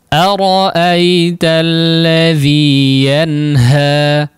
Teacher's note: ini jangan ditambah hamzah ya, atau seolah menambah hamzah, yaitu menutup antara kedua pita suara ya